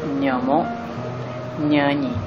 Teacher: Untuk menghasilkan konsonan sengawan gusi lelangit keras bersuaranya, pertama, depan lidah dinaikkan sehingga rapat ke lelangit keras untuk membuat sekatan arus udara. Lelangit lembut dan anak tekak diturunkan untuk memberikan laluan arus udara yang keluar dari paru-paru hingga ke rongga hidung.